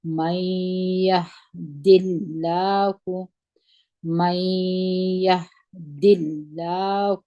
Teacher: من یهد الله، میمو په زبر د یا سره وجنګوي، نون ساکن دی، د نون ساکن وروسته یا راغلی ده، دلته ادغام د غونې سره کیږي. نون په یا کې مدغم سوی دی، ګپ سوی دی، دلته موږ تاسې د دغه نون غونه جوړوو